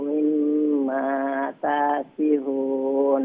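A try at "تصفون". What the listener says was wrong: ঠিক আছে মাশাআল্লাহ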